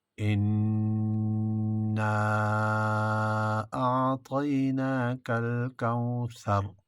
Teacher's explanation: ان میں غنہ ہوگا، نا الف مدہ ہے اور مد منفصل ہے